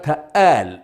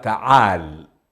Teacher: والحميريون لا ينطقون العين، وإنما يقلبونها همزة